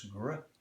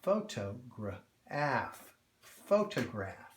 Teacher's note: But now we're adding this backside here, and the hard G, g, r, kind of blends with the R and goes gr